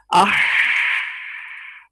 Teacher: हा में ये रिखवत है आवाज जारी होगी